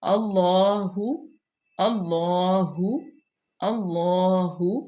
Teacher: اللہ کی لام سے پہلے زبر ہے، تو یہ پر پڑی جائے گی، مشدد بھی ہے اور اس کو لمبا بھی کریں گے کیونکہ اوپر کھڑی زبر ہے۔